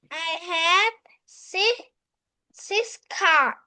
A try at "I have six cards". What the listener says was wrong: Okay, card or cards? Don't forget to say the S sound at the end. So I have 6 cards.